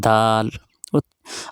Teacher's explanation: دال کا مخرج زبان کی نوک اور اوپر کے دانتوں کی جڑ سے ادا ہوتا ہے